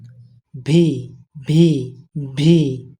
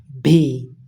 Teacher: উপরের দাঁত নিচের ঠোঁটের সাথে লাগবে